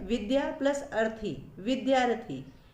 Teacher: यहाँ विद्या में आ है और अर्थी में अ है, आ और अ के मेल से आ का निर्माण हुआ, जिससे शब्द बना विद्यार्थी।